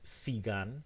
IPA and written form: sigan (sigan)